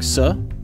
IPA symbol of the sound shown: s